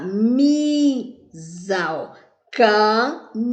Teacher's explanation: O mi subiu e o za desceu. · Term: paroxítona